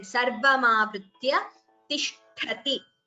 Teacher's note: And Sarvamavritya Tishthati. Tha is Mahaprana here. And Ti is Hrasva, short vowel, so please do not prolong it.